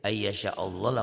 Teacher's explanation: lafaz Allahnya dibaca tebal tafkhim karena sebelum lafaz Allah baris di atas